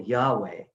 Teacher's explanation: the sound of that Yod He Vav He, Yahweh, is a breathy sound, almost as if to say, I am the breath that enlivens all things.